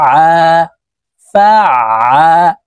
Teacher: এই আইন হরফকে হলকের মধ্যখান থেকে চাপ দিয়ে উচ্চারণ করতে হবে, কারণ আইনের মাখরাজ হলকের মধ্যখান থেকে হবে।